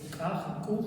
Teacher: смычка разрывается не столбом воздуха в легких, а воздухом, который нагнетается между глоткой и смычкой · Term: абруптив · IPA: [k']